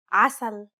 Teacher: The first sound sounds like a deep and turbulent sound that rumbles far in the throat. You'll have to retract the back part of your tongue into your mouth to cause constriction in your throat.